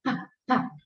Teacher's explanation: hay mucho escape de aire en la P, por lo tanto hay muy rápida la salida de aire